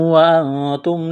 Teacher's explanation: نون ساکن کے بعد تا ہے، حروف اخفا ہے، غنہ کریں گے، آواز ناک میں چھپائیں گے